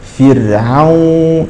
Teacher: هذه الراء لا تقرا فر فرعون تقرا مرققه فرعون قبلها مكسور وهي ساكنه فتق فرعون حفص وقانون نعم ناخذ